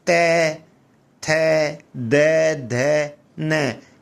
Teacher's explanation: इनका उच्चारण करते समय हमारी जिह्वा किसको स्पर्श करेगी? दांतों को स्पर्श करेगी। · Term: तैवर्ग